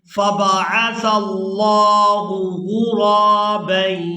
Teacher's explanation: سا کو ادا کرتے ہوئے سیٹی کی مثل آواز پیدا نہیں ہونی چاہیے